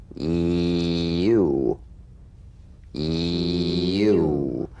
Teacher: The Y, tongue front consonant. A touch of the Y buzz before another vowel.